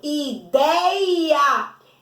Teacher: Não é a última sílaba que é mais forte, é a penúltima. Então não entra nessa regra. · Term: paroxítona